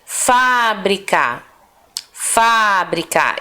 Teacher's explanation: esse fa é a sílaba mais forte